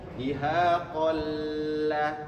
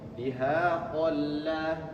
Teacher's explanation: Tetap masuk, tanwinnya tidak dibaca, seakan-akan tidak ada tanwin, masuk ke huruf lam tapi tidak ditahan dulu. Langsung dihaqalla. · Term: idgham bila gunnah